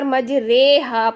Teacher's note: زبر کو زیر کی طرف جھکانا یا پھر الف کو یہ کی طرف جھکانا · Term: امالہ